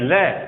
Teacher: हमारी जीव्या दांत से टकराती है, ल ऊपर के दांतों से टकरा रही है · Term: पार्श्विक व्यंजन